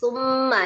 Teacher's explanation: Sempurnakan domahnya dengan memajukan kedua bibir tetapi tidak meninggikan ya. Karena kalau kita tinggikan atau nabarkan di huruf tsanya itu maka nanti ee tsunya akan bertambah panjang ya walaupun 1/4at.